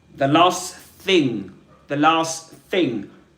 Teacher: He drops the final t sound at the end of last. Why? Because the T there is in between two consonants.